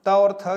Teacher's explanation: जिह्वा दांतों से स्पर्श करती है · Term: दंत्य